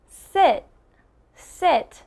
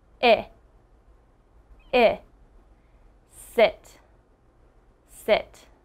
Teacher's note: my mouth is not moving a lot and my tongue is on the back of my teeth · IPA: /ɪ/